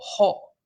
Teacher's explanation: la U en un ambiente de consonantes glotalizadas se abre y en lugar de U suena O